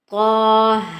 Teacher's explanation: طا کو موٹا پڑھا جائے گا اور کھینچا بھی جائے گا 1 الف کی مقدار کے برابر، کیونکہ اس کے اوپر اسٹینڈنگ فتحہ ہے، اور ہا کو بھی کھینچا جائے گا اسٹینڈنگ فتحہ کی وجہ سے۔